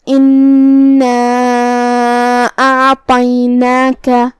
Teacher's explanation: پھر حرف الطا ہے. طا حروف التفخیم میں سے ہے، ہمیں طا کو موٹی آواز میں اور منہ پھلا کے ادا کرنا ہے. نون کے بعد یہاں چھوٹا سا مد ہے.